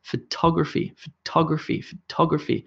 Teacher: you can hear that I'm emphasizing the ta